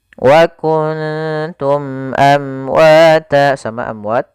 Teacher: Maka kita baca suara mimnya dengan jelas dan tidak ditahan. Wa kuntum amwata, sama amwat, di sini mim mati bertemu wa, jelas mimnya. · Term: izhar syafawi